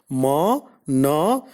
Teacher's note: Ma is a voiced bilabial nasal. · Na is a voiced alveolar nasal.